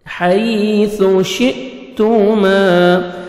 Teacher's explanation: حمزہ ساکن ہے. جھٹکے سے پڑھیں گے. تا کو مرپیش ہے.